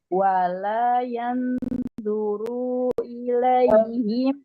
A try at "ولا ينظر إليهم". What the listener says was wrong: Masih tertahan runya, dipanjangkan runya. Wala yanzuru ilai. Nah, nggak boleh dipanjangkan runya karena nggak ada tanda panjang di ru.